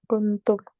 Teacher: हम उसके बाद हरफ को देखेंगे तो उसके बाद ता के ऊपर पेश है, और चूंकि ता हरफ इख्फा में से तो हम यहाँ नून पर इख्फा करेंगे, यानी आवाज़ को, नून की आवाज़ को थोड़ी देर के लिए नाक में छुपा कर पढ़ेंगे। बिल्कुल कुंतुम, ता और मीम को हम मिलाकर पढ़ेंगे।